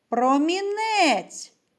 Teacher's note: куди падає наголос так на третій склад